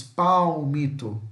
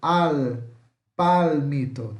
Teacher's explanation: em português falamos palmito, com som mais de U, mais fechado. Em espanhol eles puxam o L. Al, palmito, tá?